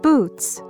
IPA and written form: buts (Boots)